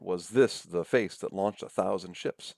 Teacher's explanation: Pairs of syllables, 2 syllables, notice, and the stressed syllable is the second one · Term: iambic feet